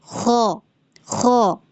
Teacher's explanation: پھر ہے ہمارے غین اور خا, جو کہ دونوں پر لیٹر ہے, ہیوی پڑھے جانے والے ہیں, اورنج لیٹر میں سے ہیں, اور یہ حلق کے اوپری والے حصے سے ادا ہوتے ہیں, ادنائے حلق سے